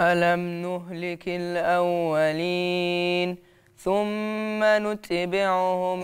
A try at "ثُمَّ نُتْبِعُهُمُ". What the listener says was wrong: انت قلقلت التاء وده حرف همس مش حرف قلقلة. ده حرف همس.